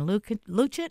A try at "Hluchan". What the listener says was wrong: It's Hluchan. First H is silent.